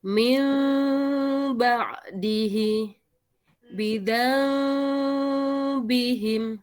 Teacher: ada getaran ya karena pertemuannya tidak ditekan sehingga ada getaran masuk ke sela-sela bibir. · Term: iklab